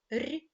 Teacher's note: звук р - це звук приголосний твердий дзвінкий